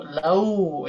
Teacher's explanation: Sedangkan waw sukun dibaca u, lau ya. Tidak dibaca o ataupun tidak dibaca e untuk ya sukun ya.